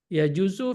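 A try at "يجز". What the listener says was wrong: Ya juz. Bukan ya juz, ya juz. Ya juz ya, pendekannya.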